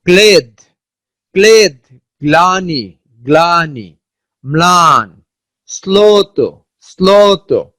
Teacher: শব্দের শুরুতে ল ফলা থাকলে সংশ্লিষ্ট ব্যঞ্জনের দ্বিত্ব হয় না। শব্দের শুরুতে যদি ল ফলা থাকে তাহলে ওই ব্যঞ্জন দ্বিত্ব হবে না